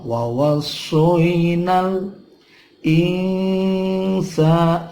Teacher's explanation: ada nun mati ketemu dengan sin, dibaca ikhfa ma'al gunnah, dengung. Insa, sa, dua ketuk ya, seperti mad tabi'i, ada harokat berdiri di situ pengganti alif.